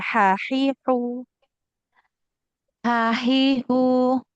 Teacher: jadi huruf ha ini ada di tengah-tengah tenggorokan kita.